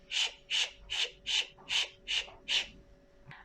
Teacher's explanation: we again put our tongue, the apex, up, almost touching the palate but leave some space, but the body of the tongue also moved up.